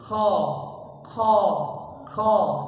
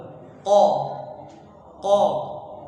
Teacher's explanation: yang penting huruf qf itu tidak ada angin yang keluar jangan sampai ko ko ko seperti Kaf ya tapi dia bersih